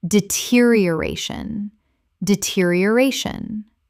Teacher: 6 syllables with the stress on the fourth.